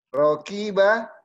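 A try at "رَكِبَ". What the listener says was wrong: Pendek. Sebentar ya, rokibanya ki-nya jangan panjang. Rokiba.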